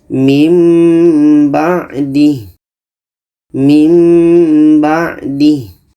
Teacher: Wattakhadha qawmu Musa min ba'dih. Nun mati kita dengungkan dan kita tukar kepada mim. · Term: iklab